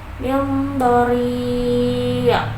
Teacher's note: itu mad arid li sukun karena huruf madnya jatuh sebelum huruf yang diwaqaf. Cara membacanya dipanjangkan 2 sampai 6 harokat.